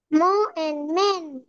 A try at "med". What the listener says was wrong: না না, এন্ড কেন না, এড। এ ড এড।